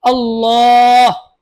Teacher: আল্লাহ শব্দে লামের ডানে জবর আছে এজন্য আল্লাহ শব্দে লাম মোটা করে পড়বো